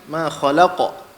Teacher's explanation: Qalqalah qaf tebal sikit.